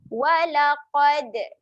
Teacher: Ada lantunan sedikit untuk huruf dal.